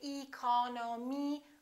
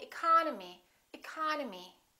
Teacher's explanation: The second syllable is stressed, therefore this E and this O are reduced.